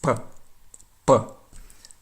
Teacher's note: There's a blast of air that comes out of your mouth, whereas in Russian it's p, p. There's no air comes out of your mouth, so it's not an aspirated letter.